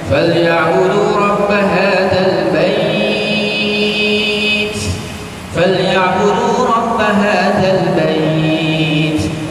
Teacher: Ha itu dia baca dalam tiga wajah. Dia baca dua, dia baca empat, dia baca enam harakat.